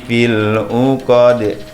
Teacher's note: huruf dal juga bacaan qalqalah, mantul